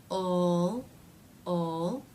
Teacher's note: So the sound will feel very far forward. In the dark L, the middle part of the tongue is raising a bit in that vowel-like sound. So since the middle part of the tongue is doing some work, ul, the sound will feel more in the middle of the mouth, further back than a light L.